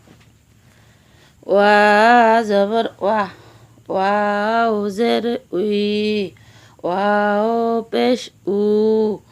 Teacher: ওয়াও দুই ঠোঁটের মাঝখানের ফাঁক থেকে আদায় হবে। নইলে বা অক্ষর আদায় হয়ে পড়া হারাম হয়ে যাবে।